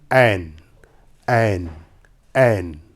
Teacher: ऐन जब बोला जाता है तो ज़बान के आखिरी हिस्से की जानिब से बोला जाता है, यानी हलक से ऐन निकलता है।